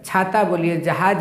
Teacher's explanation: जब हम इन सबको यानी च छ ज झ इ वर्ण या अक्षर को बोलते हैं तो हमारा जो जीभ होता है ना वो तालु में सटता है। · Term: तालव्य व्यंजन